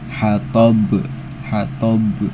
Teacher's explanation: Jadi cara bacanya itu dipantulkan dan pantulannya itu besar. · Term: qolqalah kubra